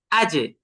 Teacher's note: উচ্চারগন হয় জিহ্বার মাঝখান থেকে এখন কলকলা কলকলা করার ক্ষেত্রে আমাদেরকে জিমটাকে জিহ্বার মাঝখান থেকে এটাকে আঘাত করতে হবে